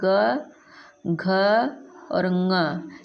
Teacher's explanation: ग का बाह्य प्रयत्न पूछा जाए तो संवारनाद घोष हो जाएगा।